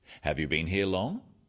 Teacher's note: Questions that start with have you are yes no questions so they have a rising tone.